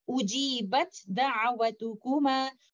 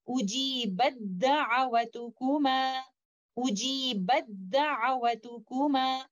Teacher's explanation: we will completely merge letter ta into letter dal. We will do idgham kamil.